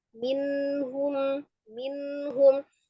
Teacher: nunnya sifatnya juga tawassut. Mengalir sebagian, tidak terlalu ditahan, tidak terlalu dilepas ya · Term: nun sukun